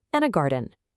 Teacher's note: on that final item, your voice falls